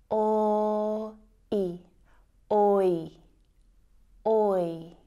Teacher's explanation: So the oi diphthong sound is actually made up of the o and I vowel sounds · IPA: /ɔɪ/